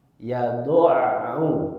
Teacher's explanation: Ain itu punya sifat tawassut, dia tidak mengalir seperti halnya rokhawah, tapi dia pun tidak mengalir seperti syiddah, maksudnya dia tawassut pertengahan. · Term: huruf ain